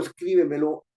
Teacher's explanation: voz y al llevar la mayor fuerza de voz Entonces está esa fuerza de voz está situada en la anterior a la antepenúltima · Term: acento tónico